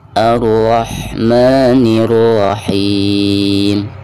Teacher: Ra-nya di sini tebal ya, karena dihukumi tabkhim karena berharkat fathah